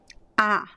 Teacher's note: It's very open. You have to really open your mouth to have this phoneme A. · So for example, the open A is closer to the letter A because we have like all these vowels, they move, the position of the mouth changes a lot, right? So the A is the most open sound, open vowel that we have in Portuguese